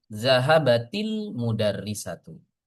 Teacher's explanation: Hamzah wasal kalau di tengah digugurkan pelafalannya ya. Jadi di sini ada pertemuan dua sukun ya. · ta taknis yang asalnya sukun wajib diubah menjadi kasrah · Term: kasrah lidafil iltiqa